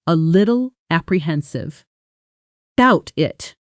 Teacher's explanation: with the t in little softening into a quick tap sound almost like a d and about it compressing into about it dropping the initial vowel almost entirely.